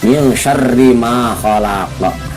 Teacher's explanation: Min itu dibacakannya harus samar karena termasuk ikhfa,